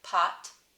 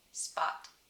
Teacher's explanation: for me pot is definitely aspirated and spot is definitely not aspirated